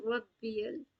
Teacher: را کو با ساتھ جب ملائیں گے ربیل تو تھوڑا قلقلہ یہاں پہ ہوگا